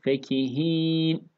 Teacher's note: Bu fe'yi uzatmamaya dikkat edelim. Fekihin değil.